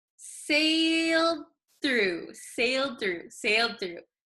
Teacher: So this D sometimes disappears if we say it very quickly.